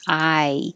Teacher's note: say i your tongue goes very high remember that it's i you're going from ah to e so your tongue rises and ends in a very high position